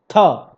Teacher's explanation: झ ट ठ ढ थ थ, देखिए जिसमें एक तरह से कह सकते हैं अगर ह जैसी ध्वनि निकले, लास्ट में ह थोड़ा सा दम लग रहा है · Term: महाप्राण